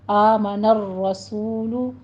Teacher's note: سو میں واو مدہ ہے، ہونٹوں کو گول کیجیے، 2 کاؤنٹ کرنا ہے